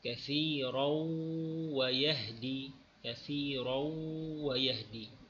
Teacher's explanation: tanwin dimasukkan ke dalam huruf waw